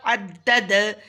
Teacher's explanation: دال پہ بھی قلقلہ کریں گے وقف میں